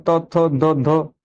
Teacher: त थ ध ध दांत प लग रही है जीभ जाकर दांतों प लग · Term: त वर्ग